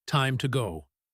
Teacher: In time to go, the word to is not stressed. It is just a quick bridge between time and go.